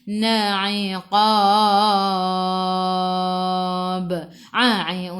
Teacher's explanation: A'i'u daripada kerongkong, bukan daripada hidung